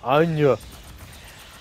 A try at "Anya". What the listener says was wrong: Wait, instead of an, it's on. Like, I think it's like a UN. Imagine it's like a UN noise.